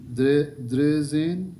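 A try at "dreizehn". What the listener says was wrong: द्रेनी द्राए, ई आई है ना, तो आप उससे रिलेट करें उसको। ड्राइज़ेन, और ये आप इसको उसी तरह पढ़ रहे हैं जैसे आप इंग्लिश में पढ़ते हैं।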